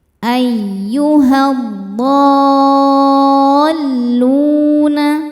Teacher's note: Cara bacanya alif lam tidak dibaca, masuk langsung ke dhad. Ayyuhadhdalluna. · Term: alif lam syamsiyah